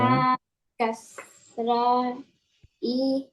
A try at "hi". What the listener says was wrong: E not. This is not A B C D E. Say Ha Kasra He. Yeah, like H double H E he.